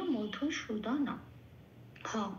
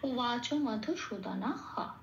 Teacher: বিসর্গ থাকলে সংস্কৃততে পূর্ণ পূর্ণ হ রূপে সেটা উচ্চারিত হয় এবং হটাকে বলতেও হয়, লিখতেও হয়।